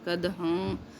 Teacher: کدحن میں تنوین کے ساتھ جو نون کی ساؤنڈ آ رہی ہے اس کے بعد فا آ رہا ہے، اس لیے اس کو بھی غنہ کریں گے، کدحاں، اور یہ دال قلقلہ کے ساتھ ہے، ٹھیک ہے، جزم ہے اس لیے قد نہیں کہنا، قدحن نہیں کہنا، قدحن، ٹھیک ہے۔